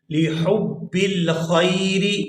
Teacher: یہاں حا کو حلق سے اچھی طرح سے ادا کریں گے